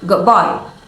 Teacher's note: the D sound in good may change slightly to sound more like a B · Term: assimilation